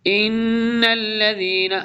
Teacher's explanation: نون کے اوپر غنہ بھی ہوگا، مشدد ہے، ادغام بھی۔